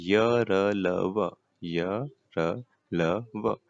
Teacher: ये सभी आपके घोष व अल्प प्राण होते हैं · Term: अंतस्थ व्यंजन